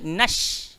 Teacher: Shin keluar dekat mana? Tengah-tengah lidah, langgar di langit atas. Dek kerana tu kita baca nash.